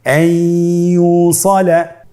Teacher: ইয়া হরফটি হলো ইদগামে বাগুন্নার হরফ। তাহলে নুনকে আমরা পরবর্তী হরফ ইয়ার সাথে মিলিয়ে গুন্নার সহিত পড়ব।